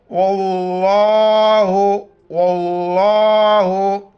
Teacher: لفظ اللہ سے پہلے زبر، لفظ اللہ موٹا کر کے پڑھیں گے، واو کو دوسری لام کے ساتھ ملائیں گے.